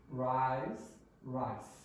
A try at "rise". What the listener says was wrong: It's a bit weaker, okay? You want z. Rise. Z. No, I want you to go rise.